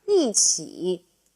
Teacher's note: Now, please note the tone change for 一. 起 is third tone, so 一 changes from first tone to fourth tone.